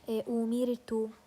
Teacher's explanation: if the ra is sakina and it's preceded by a kasra, okay, in this case I'm going to pronounce it as a light letter. For example, أميرت, as you can see the ra here is sakina and it's preceded by a kasra, so أمير, this it's light.